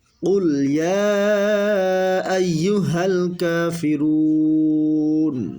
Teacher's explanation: মদের হরফ হচ্ছে পেশের বাম পাশে জজমলা ওয়াও মদের হরফ, আর মদের হরফের বামের হরফে অক্ফ হইলে মধ্যে আরজি 3 আলিফ টেনে পড়তে হবে